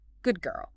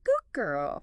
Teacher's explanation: the D sound at the end of good often assimilates to the G sound at the beginning of girl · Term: assimilation